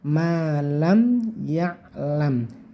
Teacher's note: mim sukun bertemu ya, ini namanya idhar syafawi, tidak boleh dibaca dengung, yaitu jelas saja malam ya'lam gitu ya.